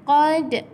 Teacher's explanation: Ini qalqalah sughra. Bila qalqalah sughra, lantunan dia kecil sahaja.